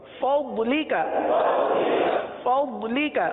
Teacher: نہ اس کو ضاد پڑھیں گے نہ اس کو دواد پڑھیں گے بلکہ ضاد پڑھیں گے. ضاد زبان کی کروٹ, زبان کی کروٹ اوپر کے داڑوں کی جڑ سے یہ ضاد کی ادائیگی ہوتی ہے